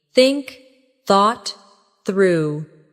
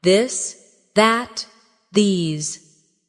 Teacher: For example, the th sound in think or this. Put your tongue between your teeth and push air out for think. For this, your tongue touches the same position but with your voice turned on.